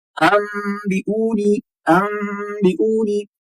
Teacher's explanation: नून और मीम दोनों एक साथ, अनबिऊनी अनबिऊनी, तो यहाँ पर ज्यादा मीम की आवाज ही आती है